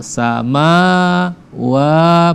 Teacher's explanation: sama wa panjang 2 harakat ya